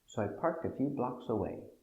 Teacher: accent on important words parked and blocks